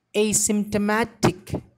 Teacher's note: Here the stress is given on very first syllable as well as on ma syllable.